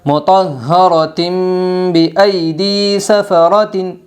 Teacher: دو زیر تنوین کے بعد با آئی ہے اس لیے دو زیر تنوین کو میم سے بدل کر غنہ اور اخفاء کے ساتھ پڑھیں گے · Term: اقلاب